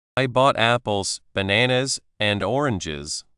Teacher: Voice rises on apples, rises on bananas, and falls on oranges. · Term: intonation